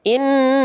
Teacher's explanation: Jadi L-nya masih jalan tanpa memantul tapi tanpa terputus. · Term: tawasud